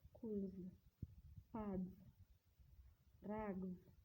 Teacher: For example, in the word but, parks, raps. In the environment of voiced sound, the s becomes as z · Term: z sound